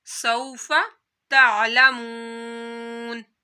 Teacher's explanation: वऊ साकिन से पहले पेश आ रही है तो यहाँ पर वऊ मदा होगा। जिस तरह आप लोग हरूफे मदा को लंबा करते हैं या खड़े मद को, इसी तरह आपने यहाँ भी एक अलिफ के बराबर इसको खींचना है।